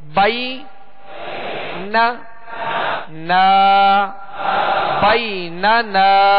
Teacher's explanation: اور آگے جو نون ہے دوسرا اس کے ساتھ الف مدہ ہے تو 1 الف کی مقدار کھینچیں گے